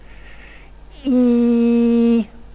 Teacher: a vowel that involves the highest possible tongue position in the mouth and the most front quality · this is the highest sort of E I can produce and here is the place where the narrowing occurs now the